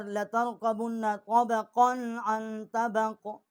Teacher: طبقاً پہ غنہ نہیں کیا آگے حروف حلقی ہے